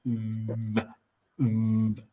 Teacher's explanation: So when you say the V sound, if you can see my mouth, we say V, V. The tooth comes onto the lip and we make the sound through that. So it's a V.